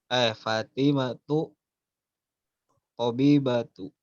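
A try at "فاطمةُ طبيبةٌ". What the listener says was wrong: Tabibatun. Yang nggak pakai tanwin itu nama perempuannya, namanya aja.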